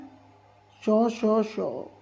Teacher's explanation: पहली बात तो श जो होता है ना, याद रखना, महाप्राण होता है, तो अल्पप्राण तो होता नहीं है, तो यहीं पे ये बात हो गई गलत। अघोष होता है और ये जो होता है मूर्धन्य भी होता है, पर अल्पप्राण नहीं होता, इसलिए हो जाएगा हमारा गलत।